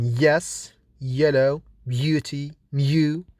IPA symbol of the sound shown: j